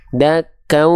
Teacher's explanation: Bunyi an-nya di sini dileburkan ke bunyi au-nya. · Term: idgham bigunnah